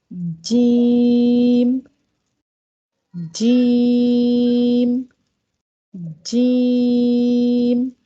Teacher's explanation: जैसे ही जीम को हमने पढ़ना स्टार्ट किया तो आपकी ज़बान का जो बीच वाला हिस्सा है वो ऊपर के तालु के साथ लग जाता है, चिपक जाता है